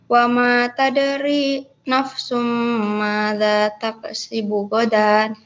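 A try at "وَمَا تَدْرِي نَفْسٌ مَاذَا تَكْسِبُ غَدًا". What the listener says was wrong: Kafnya jangan dipantukan. Taksi. dialirkan udaranya sedikit. Tak.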